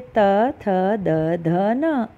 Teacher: ये बोलते वक्त दांतों में टच की ना आपकी जीभ, तो इसीलिए इन व्यंजनों को बोलते हैं दंत्य।